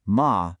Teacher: And a sharp falling tone, ma, means to scold.